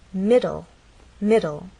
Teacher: this word has two syllables middle and the stress is actually on the first part ends in an e but the final sound is an L